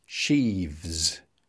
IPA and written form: ʃiːvz (sheaves)